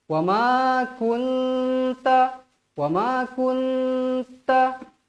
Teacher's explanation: Nun kosong bertemu huruf ta ta hukumnya ikhfa Hakiki dengung di baca dengung dua harakat wajib dengung dua harakat Jangan kurang wama kunta wama kunta baik · Ta hukumnya ikhfa hakiki. Dengung, dibaca dengung 2 harakat.